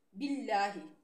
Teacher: باللہ میں لفظ اللہ کے لام سے پہلے زیر ہے، باریک پڑھیں گے